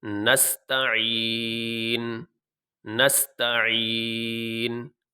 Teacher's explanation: آخر میں جب وقف کریں گے تو وقف کرتے ہوئے نون ظاہر ہونا چاہیے، پتہ چلنا چاہیے کہ آخر میں نون پڑھا جا رہا ہے، لیکن پیش نہیں پڑھیں گے